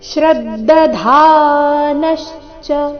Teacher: ಅಥವಾ ಅಜ್ಞಶ್ಚ ಅ ಮೇಲೆ ಸಹ ಆಘಾತ ಬರಬೇಕು ಅಜ್ಞಶ್ಚ ಶ್ರದ್ಧದ ಶ್ರದ್ಧ ಧಾನಶ್ಚ ಧ ಇಲ್ಲಿ ಮಹಾಪ್ರಾಣ ದೀರ್ಘ ನಂತರ ನ ಮೇಲೆ ಆಘಾತ